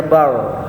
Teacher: ro-nya dibaca tebal ya, karena sebelum huruf ro ada huruf yang berbaris fathah, dibacanya bar.